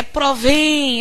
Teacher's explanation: Olha que sílaba tônica é a sílaba mais longa é provém essa sílaba final que se prolonga durante mais tempo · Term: oxítona